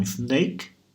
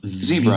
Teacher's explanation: Então, o S não vibra, o Z vibra. A diferença é que um vibra, o outro não vibra.